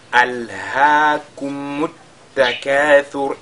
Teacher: Cette lettre Ra, comme on marque la pause, sera Sakina. Et on voit donc qu'elle sera précédée de Ad-Damma. Elle sera donc lue avec At-Tafkhim.